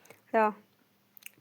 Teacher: रा वर्ण अल्पप्राण व्यंजन है जिन व्यंजनों के उच्चारण में मुख से कम श्वास या अल्प श्वास निकले